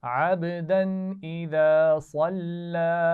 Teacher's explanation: अब्दन इज़ा, हमजा आ गया तो हमने गुन्ना नहीं किया। · सल्ला में साद को मोटा पढ़ेंगे, लेकिन उसके बाद वाला लाम मोटा नहीं होना चाहिए